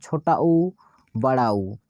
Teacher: आप जब बोलते हैं तो आपके होंठ क्या होते हैं, आगे की ओर आते हैं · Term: ओष्ठ स्वर